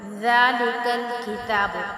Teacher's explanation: اب اس ذال کو جو ہے ہم نرمی کے ساتھ ادا کریں گے کیونکہ یہ حروف لثیہ میں سے ہے، ٹھیک ہے۔ کتاب، اب تا پہ کھڑی زبر ہے، اس کو جو ہم 1 الف یعنی 2 حرکات کے برابر کھینچیں گے